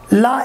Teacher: la is called a lateral approximant